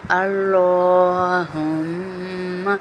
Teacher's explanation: لام کو پر پڑھیں گے، موٹا پڑھیں گے ، اللہم، یہ ہا جو ہے نا یہ سینے سے نکلتا